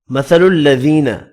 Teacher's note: ذی یا مدہ ہے، ایک الف کی مقدار میں کھینچ کر پڑھیں گے